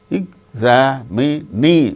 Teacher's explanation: In the case of the word examinee, examinee, fourth syllable gains stress. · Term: word stress